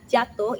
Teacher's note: pertemuan depan ujung lidah menyentuh langit-langit keras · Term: laminopalatol